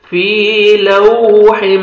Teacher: lips کو round میں لے کے جانا ہے گول کریں گے ہونٹوں کو تاکہ واو اچھی طرح ادا ہو جتنا ہونٹوں کو گول کریں گے اتنا اچھی طرح واو ادا